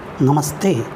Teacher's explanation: नमः प्लस ते नमस्ते, विसर्ग स में परिवर्तित हुआ है